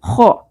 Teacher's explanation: خ میں خراش کا ایلیمنٹ ہوگا، کھردرا حرف ہے، اور پر بھی کریں گے